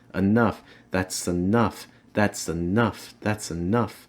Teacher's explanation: here you're linking the that's with the ah sound that's enough the s is gonna slide onto the enough